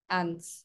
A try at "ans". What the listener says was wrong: আনস না অ S silent, যে 18 ans, যে 18 ans